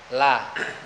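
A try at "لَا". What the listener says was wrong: La. Masih tebal, coba tipisin.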